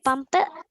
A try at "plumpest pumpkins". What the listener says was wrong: ইটস ফ বলবে না, ইটস এই যে ফা, দুই ঠোঁট একসাথে নিয়ে হটা ছেড়ে দিবে, ফা ফা ফা ফা ফা ফা ফা ফা ফা। বাসায় এটা ট্রাই করতে থাকবে, ফাফা ফাফা ফাফা, ঠাঠা